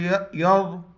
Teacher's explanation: یا ضاد زبر یض، ضاد، یہ زبان کو دائیں اور بائیں داڑھ میں جب اس کو ٹچ کریں گے انشاءاللہ ادا ہو جائے گا